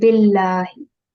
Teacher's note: And if we have the word Allah and before that, if it's kasra, then this lam does not need to be rounded, or there's no need to be pronounced with thick or broad sound. So this will be billahi.